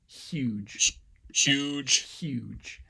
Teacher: the h moves forward um there's more of a constriction in the palatal place of articulation · the H moves forward there's more of a constriction in the palatal place of articulation because there's a palatal fricative occurring right after it. So that's, and that looks more like a sibilant because I'm still getting that sort of obstacle turbulence at the back of my upper row of teeth.